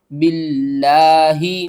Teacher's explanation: کاف یا زبر کئی، فا زبر فا، کیفا، تا کاف زبر تک، فا پیش فو، را واو پیش رو، نون زبر نا، تکفرون، با لام زیر بل، لام کھڑا زبر لا، ہا زیر ہی، باللہ، لفظ اللہ سے پہلے یہ دیکھیں زیر ہے تو ہم نے لفظ اللہ کو باریک کر کے پڑھنا ہے